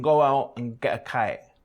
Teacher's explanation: The k and g consonants are pronounced quite far back in the mouth